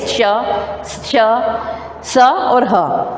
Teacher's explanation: ऊष्म व्यंजन। इन व्यंजनों के उच्चारण में मुख में गर्म श्वास वायु रगड़ खाती हुई निकलती है, इसी कारण इन्हें ऊष्म व्यंजन कहा जाता है।